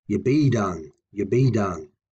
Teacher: notice I pronounced be done with more intensity than yeah so the yeah it's a little bit quiet it's not stressed